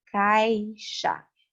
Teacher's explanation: Eu tenho um A com uma força um pouco maior e o I ali com uma força não tão intensa. São pronunciadas em uma sílaba. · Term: ditongo